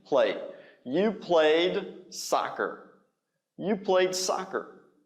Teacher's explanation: It's not. It's not two syllables, it's one. It's played, right? Play with a d sound at the end.